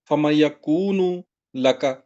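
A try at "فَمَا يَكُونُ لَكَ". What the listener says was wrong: یکون، ماں کو لمبا کرے نا، فما یکون،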